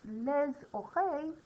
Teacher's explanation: les oreilles, we pronounce the S because it starts with a vowel